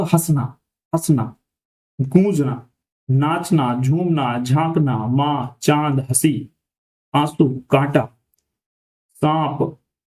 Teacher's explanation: चंद्रबिंदु का प्रयोग भी हम उन वर्णों को लिखने में करते हैं जिनका उच्चारण मुख और नाक दोनों की सहायता से होता है